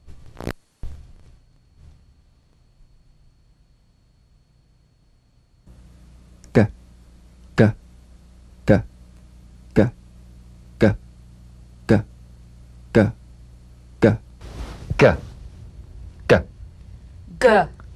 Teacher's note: the voiced tongue back plosive consonant G place the back of the tongue in gentle contact with the